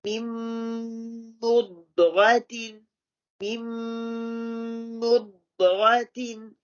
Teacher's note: the first noon is dropped and the meme fully merged into the meme.